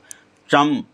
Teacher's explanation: तालु से जीभ थोड़ी सी तालु से टकराती है जब चम और च वर्ग बोलते हैं